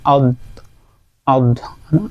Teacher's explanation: জিহবার ডান অথবা বাম কিনারা এবং উপরের উপরের দাঁতের সাথে লেগে উচ্চারিত হবে